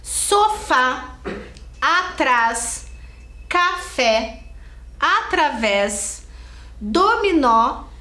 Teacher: a sílaba tônica a sílaba mais forte que está acentuada está por último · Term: oxítonas